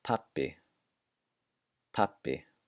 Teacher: listen to how I double the sound of the B in this word · for our English ears, it sounds more like a P when it's in the middle of words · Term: double sound